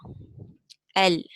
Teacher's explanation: The deviation of the sound of the lam is to the sides of the tip. When you say L, that deviation comes to the sides of the tip. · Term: drifting